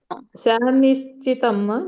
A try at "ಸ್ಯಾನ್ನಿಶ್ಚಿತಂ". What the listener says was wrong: ಸ್ಯಾನ್ನಿಶ್ಚಿತಂ, ನೀನ ಒತ್ತಿ ಹೇಳ್ಬೇಕು. ಸ್ಯಾನ್ನಿಶ್ಚಿತಂ.